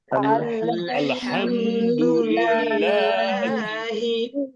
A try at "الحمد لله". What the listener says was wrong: ওকে, এই যে হাম এখানে ধরে রাখা যাবে না। আর আলের মধ্যে অনেকের লাম নড়তে চায়, আল্লে, আল্লাহ, আলো, এরকম যেন না হয়, আল হাম।